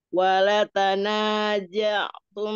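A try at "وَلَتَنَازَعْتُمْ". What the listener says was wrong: Ah, jangan ja. Za, za. Pakai Z.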